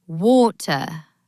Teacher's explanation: In British English, they might say water with a very clear T. But in American English, that T turns into a soft D.